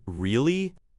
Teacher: If I say the word really with a high sharp rise, it shows surprise or disbelief. If I say really with a low drawn out fall, it shows disappointment or sarcasm.